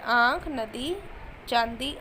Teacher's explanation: आगे है अनुनासिका। इसके उच्चारण में हवा नाक और मुंह दोनों से बाहर निकलती है और चिन्ह है चंद्र बिंदु, जैसे आँख, नदी, चांदी, आंधी।